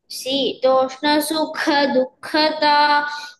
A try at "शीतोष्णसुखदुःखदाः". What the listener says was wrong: you're eating all the visargas शीतोष्ण सुख दुःखदाः